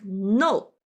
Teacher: the four tones, falling down sharply, like no, an angry sound.